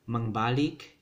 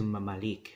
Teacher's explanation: voiced bilabial sound, b, changes to this m. So now we have mamalik, right?